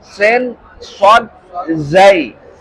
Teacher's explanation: Sofir itu artinya berdesis ya atau berdengung seperti dengungnya lebah ya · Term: saofir